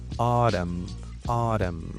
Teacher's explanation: again, you go for a flap T. Okay. And just change it into D